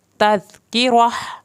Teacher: ये ता जब भी ता पे तनवीन की हालत में वक्फ होगा तो ता हा में कन्वर्ट होगा। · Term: हा की आवाज़